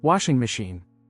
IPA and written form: ˈwɑːʃɪŋ məˌʃiːn (Washing machine)